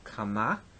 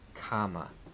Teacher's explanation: So these are almost indistinguishable from one another. The participle has an accent on the second syllable, kama, where the affix has it on the first syllable, kama. Note here the shift of the accent.